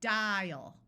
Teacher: In these unaccented syllables, the A is going to schwa. So we have dial with a clear long I and the A schwas